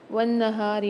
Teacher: نون پر مشدد ہے، یہاں پر بھی غنہ کریں گے، ہا کو ایک الف میں دار کھینچ کے پڑھیں گے۔